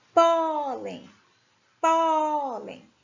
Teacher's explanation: a claro e aí a penúltima sílaba muito bem pólen pólen o pó é a penúltima sílaba e ela é a sílaba tônica